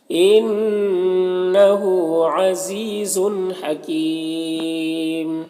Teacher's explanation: انہو نون مشدد غنہ ہوگا، اور ہاں الٹا پیش ہے، اسے ایک الف کے برابر کھینچیں گے۔ · وقف کی صورت میں مد عارض وقفی ہوگا، تو اس طرح سے پڑھیں گے۔